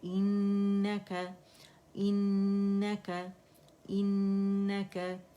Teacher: नून जो है हर गुन्ना मुशद्दद है, तो यहाँ पे हम 2.5-3 काउंट का हमने गुन्ना करना ही करना है